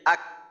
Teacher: ওইটা হচ্ছে এইভাবে যে হামজা কাফ জবর আক, অর্থাৎ প্রথমে আওয়াজটা আটকাবে, আক, আওয়াজটা আটকাইলো, আওয়াজটা আটকানোর পর যেমন দেখেন যে আক, যখন আমি বলি তখন জিহ্বার গোড়ার একটু সামনে যে অংশটা, ওই অংশটা উপরের তালুর সাথে যুক্ত হয়ে যায় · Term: জজম